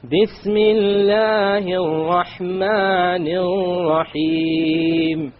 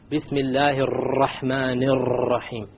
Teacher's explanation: Notice the 2 R's with the shadda on them in the Rahman. I didn't roll them. Remember we talked about we're not allowed to roll them.